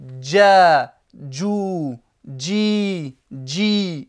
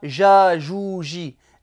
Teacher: Le jim, c'est comme s'il y avait un petit del sous-entendu juste avant. On ne dit pas ja-jou-ji, c'est pas un J français, c'est j.